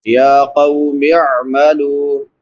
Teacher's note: आइन है, हलक के दरमियान से अदा होती है।